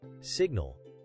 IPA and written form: ˈsɪɡnəl (Signal)